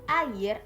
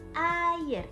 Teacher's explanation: Saat mengucapkan air, mulut itu mulai dari vokal a ke i. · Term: diftong